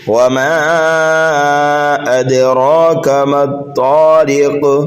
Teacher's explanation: والسماء والطارق وما ادراک ما الطارق، وما میم کے بعد میں الف مدہ ہے اور الف مدہ کے بعد حمزہ دوسرے کلمے میں آنے کی وجہ سے یہاں پر مد منفصل ہوگا، 2.5 الف کے برابر میم کو کھینچ کر کے پڑھیں گے اور حمزہ کو دال میں ملائیں گے اور یہاں پر قلقلہ کریں گے، قلقلہ صغیرہ، یہاں پر چھوٹا قلقلہ ہوگا، اس لیے کہ حروف قلقلہ اگر پہلے سے ساکن ہوں تو پھر وہاں پر قلقلہ صغیرہ ہوتا ہے۔